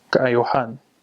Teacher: If you change that word to kaayohan, the emphasis changes to the O